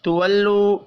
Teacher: تولو واو مدہ کو بھی 1 الف کے برابر کھینچ کر پڑھنا ہے